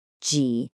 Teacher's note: It's a falling rising tone. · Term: third tone